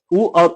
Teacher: उ और उ का उच्चारण स्थान क्या हो जाएगा, ओठ से होता है